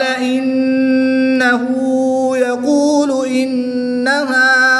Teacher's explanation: نون شدد میں غنہ کر کے پڑھیں گے